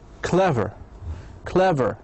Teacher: It has 2 syllables, and the stress must be located on the first syllable.